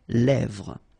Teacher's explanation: Same thing here, final S not pronounced, and then this E accent grave here, it gives you the E, really open sound.